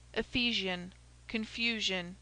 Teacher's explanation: si after an accented vowel is pronounced like zh as in ephesian confusion pronounced ephesian confusion.